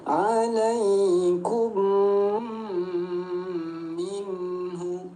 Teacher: Tinggal kita dengungkan dua ketukan bunyi mim. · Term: idgham mimi